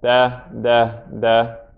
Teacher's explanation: It's touching the back of the front teeth on the top. Back of the front top teeth.